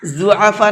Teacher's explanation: یہاں پر یہ بڑا مد ہے، اس کو 4 سے 5 الف کی برابر کھینچ کر کے پڑھیں گے